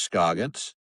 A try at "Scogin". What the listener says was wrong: You say his last name wrong. It's Scoggin. Scogin. No, there is no S. Yeah, no, there's just the one at the beginning.